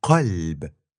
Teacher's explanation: Then came q, as in qalb, which was a K-like sound that's made by bringing the back of your tongue to your uvula, even further back behind a K. So you get q instead of k.